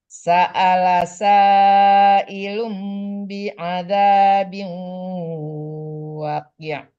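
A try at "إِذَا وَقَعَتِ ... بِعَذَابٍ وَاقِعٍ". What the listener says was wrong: Waqi', panjangkan wa-nya dong.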